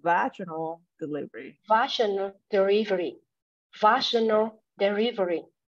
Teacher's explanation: So the stress is on the first syllable